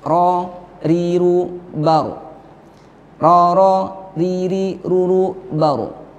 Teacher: Akan tetapi Yang dimaksud ialah jika mengucapkan ro supaya ujung lidahnya tidak terlalu banyak bergetar. Jadi ada 2 getaran saja · ujung lidah tergetar ketika mengucapkan huruf ro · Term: takrir